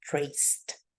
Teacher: the final sound is an S and the S is going to be a voiceless sound